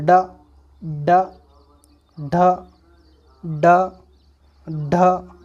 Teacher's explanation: तो एकदम जबान हमारी नीचे हट रही है, तेजी से साउंड कर रहा है। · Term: उत्क्षिप्त व्यंजन